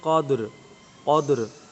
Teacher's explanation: قاف کو پر، دال پر قلقلہ اور جزم کا خیال کریں گے، اور را پر بھی جزم کا خیال کریں گے